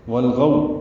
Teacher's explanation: والغو، لام ساکن پہ اظہار ہے، غو غین پر ہے اور واو لین ہے، ہونٹوں کو گول کریں گے، آگے لائیں گے